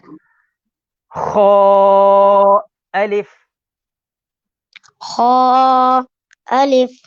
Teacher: خا یہ بھی حروف مستعالیہ میں سے ہے. اس کو بھی پر یعنی موٹا پڑھیں گے